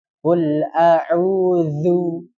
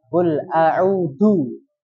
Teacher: jadi seperti digigit zu dan suaranya itu terseret